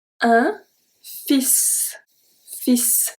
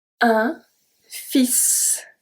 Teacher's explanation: So here we don't pronounce the L.